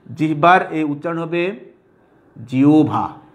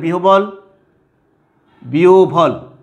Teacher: যেখানে হয়ের সাথে ব যুক্ত হয়েছে সেখানে বয়ের উচ্চারণ হয়েছে ভ, কিন্তু তার আগে হটা হয়ে যাবে, যে হয়ের সাথে সেই হটা হয়ে যাবে ওকারান্ত বা ও।